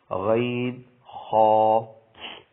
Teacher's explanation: حلق کے اوپر والے حصے سے ادا ہوتے ہیں